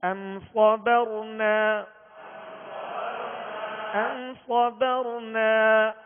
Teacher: میم ساکن کے بعد حرف صاد ہے، قاعدہ اظہار شفوی، غنہ نہیں کریں گے